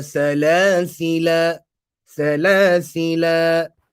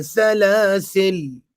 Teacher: some pronounce it with a mad for the duration of two vowels, whilst others pronounce it with a sakoon